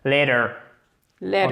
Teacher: on a un changement au niveau du son, le T devient presque un D